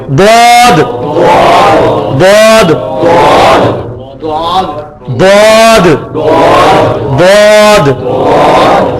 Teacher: یہ ضاد، یا ایک طرف کو بھی لگا سکتے ہیں، زبان کی ایک طرف اوپر دانتوں کے جڑ میں لگائیں · یہ ضاد کو نکالنے کا طریقہ یہ سب سے مشکل مخرج ہے کہ یہ دیکھیں اگر یہ زبان ہے نا ہماری، اچھا جی یہ زبان، یہ دیکھیں یہ زبان کی 2 کروٹیں ہیں نا، ان کو بیک وقت اوپر کے دانتوں کی جڑوں میں لگانا ہے. ضاد، یہ دال کو موٹا نہیں کرنا ہوتا، دال کا تو مخرج ہی بالکل ڈفرنٹ ہے.